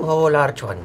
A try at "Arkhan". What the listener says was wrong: Well, first of all, it's Arkhan. It's a hard K.